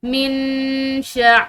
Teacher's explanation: मिन, यहाँ पर नून साकिन है, नून साकिन के बाद शीन, ये हरूफ इख्फा में से है, तो इसकी वजह से जो है इस नून साकिन पर इख्फा किया जाएगा